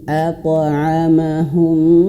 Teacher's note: Nah, kalau di sini di bawah di sini warna merah, idgham. Idgham artinya masuk ke huruf mim. Masuk, masuk. Berarti ditahan 2 harokat